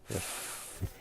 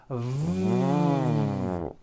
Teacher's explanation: consonants and they are both produced exactly the same way except the F sound is unvoiced and the V sound is voiced they are both produced by contacting your upper teeth to your